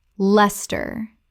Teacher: 2 syllables only. The ice disappears entirely.